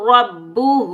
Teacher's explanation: را کے اوپر زبر آنے کی وجہ سے را کو پور پڑھیں گے، موٹا پڑھیں گے